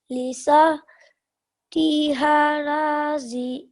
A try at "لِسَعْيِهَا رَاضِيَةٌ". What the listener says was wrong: Okay, this one, it's not tiha. Yeah, it's ya. So lisa yiha.